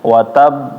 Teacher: Ketika membaca qalqalah di huruf ba, itu jangan sampai suaranya terputus atau saktah ataupun dikasih rem. Jadi misalnya contohnya watab, jangan watab be.